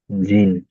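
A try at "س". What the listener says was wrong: জিম না, এটা হবে সিন। দেখুন এটা কেমন দেখতে, দেখুন ভালো করে দেখে না, ওইটা হলো সিন, দেখুন এই এই এই সিন, এই দেখছেন?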